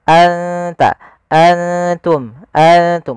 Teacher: ikhfa itu membaca antara izhar dan Idam maka Mak di sini nunnya kita samarkan ke huruf ta langsung seakan-akan kita melafalkan huruf ta